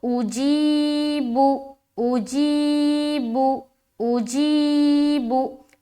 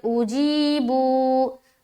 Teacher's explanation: حمزہ کے اوپر پیش ہے، اسے جلد پڑھیں گے، اور با کے اوپر بھی پیش ہے، جلد پڑھیں گے